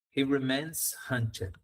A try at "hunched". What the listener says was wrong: A lot of people make an R sound, runched, but hunched is